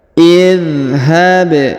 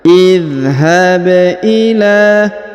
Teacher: perhatikan huruf ba berharakat sukun maka kita pantulkan atau kita qalqalahkan